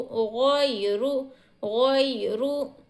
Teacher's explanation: یالین کو ہم جلدی ادا کریں گے، ذرہ بھی نہیں کھینچیں گے۔